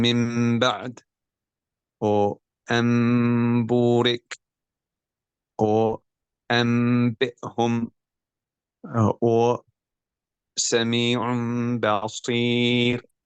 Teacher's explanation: the changing of the noon sakina or the tanween when followed by a ba into a hidden meme with the gunna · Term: qalb